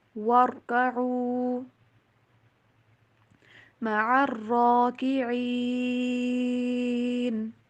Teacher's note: را کے پر آواز کو ہلانا بھی نہیں ہے اور آواز کو باریک بھی نہیں کرنا، را کو موٹا پڑا جائے گا